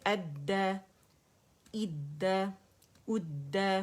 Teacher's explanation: دال باریکی سے ادا کریں گے · اور دال مشدد ہے تو مضبوطی اور جماع دکھانا ضروری ہے